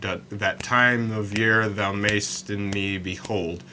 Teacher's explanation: All of those feet have the same intonation, so the second beat is stressed, the first beat is not stressed. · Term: iambic foot